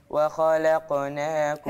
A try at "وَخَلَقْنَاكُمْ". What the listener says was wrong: القلقله عايزه اسمعها اقوى من كده